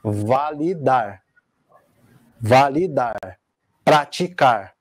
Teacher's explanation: Começando pela oxítona, né, que a sílaba tônica é a última.